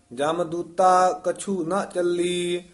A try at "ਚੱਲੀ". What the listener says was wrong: ਹਾਂ, ਇਹ ਚੱਲੀ ਨੀ ਕਹਿਣਾ, ਥੋੜਾ ਜਾ ਕੱਸ ਕੇ ਬੋਲਣਾ।